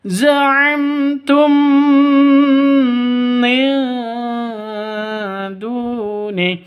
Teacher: Mim mati bertemu dengan mim. Cara bacanya masuk ke mim yang kedua disertai dengung. Karena bacaan ikhfa, karena bacaan idgham mimi.